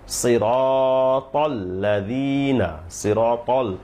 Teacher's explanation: সিরাতাল ত মোটা হবে দাল পাতলা হবে